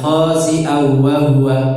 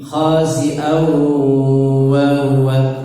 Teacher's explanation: Didengungkan masuk ke rongga hidung, bindeng. Khasi'au, dibindengkan, ya.